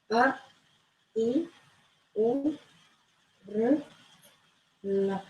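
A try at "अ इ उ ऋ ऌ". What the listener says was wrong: You just don't have to drag it. Lu chalodavada.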